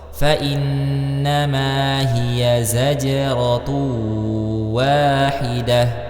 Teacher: terdapat huruf jim yang sukun, maka dimunculkan sifatnya qalqalah